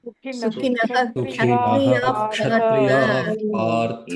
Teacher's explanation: Sukinaha, Kshatriya, you should not replace Visarga by Ardha Visarga.